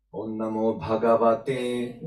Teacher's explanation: this te is in the upper, let's say upper tone, and it is denoted as with this vertical stroke.